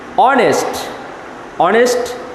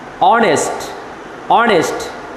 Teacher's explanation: This word has started with the letter H but the pronunciation of H is here silent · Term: H is silent